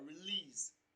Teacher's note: the stress falls on the second syllable, lease. It is pronounced louder and longer, release. Option B, exit.